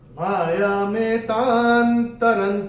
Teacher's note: का अक्षर है टी और अनुस्वार के बाद जब का आएगा तो अनुस्वार का उच्चारण होगा एन